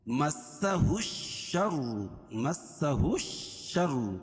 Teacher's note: الشر، ہا کو شین میں ملائیں گے، اور الف لام کے بعد حروف شمسی کے 14 حرفوں میں سے شین ہے تو یہ لام نہیں پڑھی جائے گی، ہا کو شین میں ملائیں گے